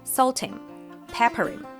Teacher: Natives often drop the first sound in pronouns like him, her and them. In this case, the H in him is dropped and connects to salt and pepper.